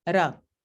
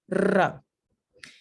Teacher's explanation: modo número 7 son las vibrantes las vibrantes se tratan de un golpe o unos golpes rápidos o una vibración del ápice de la lengua contra los alveolos